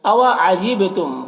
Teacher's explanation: با حروف قلقلہ میں سے ہے اور با میں جزم میں ہے تو با میں قلقلہ ہوگا۔ میم میں اظہار شفوی ہو رہا ہے۔